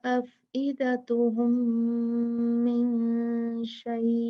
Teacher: वला अबसारुहुम वला अफइदतुहुम वला अफइदतुहुम मिन शै, अब यहाँ देखें मीम साकिन है, उसके बाद मीम आया है जी, फौरन यहाँ पर हम क्या कर देंगे, यहाँ पर हम इदगाम शफवी कर देंगे, मीम को अगले मीम से शिद्दत से मिला के 2 काउंट गुन्ना कर देंगे